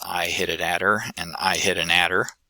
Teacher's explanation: that flap consonant that sounds a little bit like a t or a d